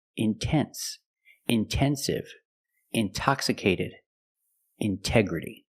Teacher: we pronounce the T like a pure T TT release the sound